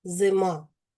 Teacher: Ненаголошений звук и вимовляємо з наближенням до е.